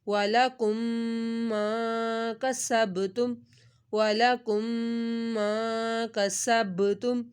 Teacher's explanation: یہ دیکھیں میم ساکن کے بعد میم آ گیا، ہم نے گنہ کیا. کسب با ساکن تھا، اس کے اوپر ہم نے کلکلا کر دیا کسبتم.